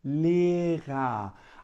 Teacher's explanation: é um R falado aqui na garganta é um r gutural e que tem um sonzinho mais arranhado de garganta